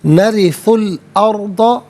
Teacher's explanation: ارضا میں را ساکن ما قبل حمزہ پر زبر ہے، را ساکن کو پر کر کے پڑھیں گے